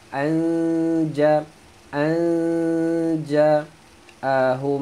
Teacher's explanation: Nun mati bertemu jim, dengung sembunyikan bunyi nun.